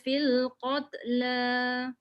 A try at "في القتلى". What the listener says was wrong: Jangan bunyi fil qatla. Angin je. Ada bunyi tet. Dia bukan lantunan, dia bukan qalqalah. Qat. Anin je. Qat.